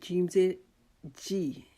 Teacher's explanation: سازر سی. جیم، جیم جو ہے یہ ہماری زبان کا درمیانی حصے سے ادا ہوتا ہے، اس کو ہم اوپر تالوں کے ساتھ درمیان کے ساتھ لگائیں گے تو جیم ادا ہوگا.